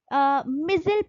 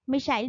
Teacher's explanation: America में इसको मिजिल पढ़ा जाता है, जबकि ब्रिटिश इंग्लिश में इसको मिसाइल पढ़ा जाता है